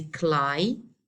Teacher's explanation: It consists of two syllables. The rule for this word says that we have to stress the first syllable. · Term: primary stress